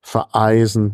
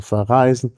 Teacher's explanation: Kehlkopf knacklaut und einfach nur knacklaut davorgesetzt